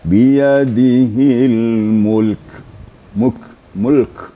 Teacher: huruf kafnya yang sukun itu harus kedengaran sedikit, mahmusnya.